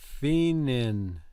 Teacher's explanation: She leaves the O out.